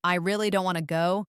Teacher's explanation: if someone says, I really don't want to go, the word really is stretched